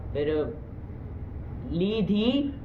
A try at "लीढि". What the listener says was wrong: धी क्यों होगा?